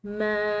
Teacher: میم کو ہم نے لمبا ادا کیا کیونکہ اس کے بعد الف مد آ رہی ہے